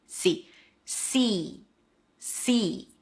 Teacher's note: See. It's an S sound and high E. Make sure it's long, so it's not see.